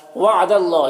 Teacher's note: اللہ کے لام سے پہلے دال کے اوپر زبر ہے تو اللہ کے لام کو پر پڑھیں گے، کھڑا زبر ہے، ایک الف کے برابر کھینچیں گے۔